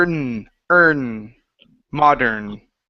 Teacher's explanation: you're placing your tongue against the top of your mouth after that r